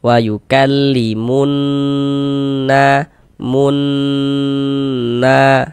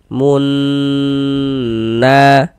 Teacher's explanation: Dighunahkan atau didengungkan. Jadi di bagian munnya itu suaranya itu kita tahan kita panjangkan sejenak. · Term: ghunah musyaddadah